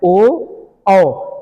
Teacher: देख रहे हैं हमारे गले प भी जोर पड़ रहा है और होठ भी हमारे गोल हो जा रहे हैं